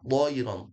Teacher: Wa aur bukan ar ya aur dinaikkan ya dinaikkan lidahnya atau dinaikkan suaranya wa arsala alaihim thayran do juga bukan thayran meskipun sudah benar ya thayran tapi yang lebih maksimal thayran do dia punya sifat namanya isti'ala menebal dan menaikkan